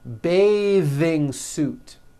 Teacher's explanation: when you change it into a verb to bathe the vowel changes to an a sound and the th is voiced